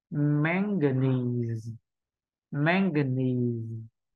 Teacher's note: Nhớ là tất cả hai âm phía sau là âm không nhấn trọng âm